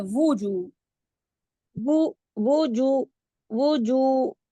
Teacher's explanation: वाव के लिए हंठ गोल करने ही करने हैं और ऊपर पेश हो फिर ना पेश के लिए भी होंठ जो होते हैं गोल होते हैं वजू हुई वजू वजू यम मुस्फिर अच्छा यहां पे ना यमा इम यहां पे इदगाम हो रहा है।